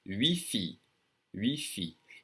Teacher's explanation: I don't hear the T. I don't say it at all.